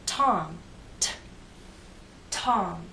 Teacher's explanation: you can feel the puff of air in t Tom